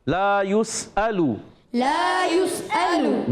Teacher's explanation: حمزہ کو خوب ظاہر کریں گے، حمزہ زبر آ اور لام پیش لو، یہ حرکاتیں نہیں کھینچیں گے